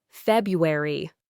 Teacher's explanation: especially when talking informally, the first R is made softer or even dropped leading to February. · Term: elision